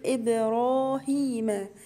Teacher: اكسر الهمزه كويس وحرف الباء هنا اقلقله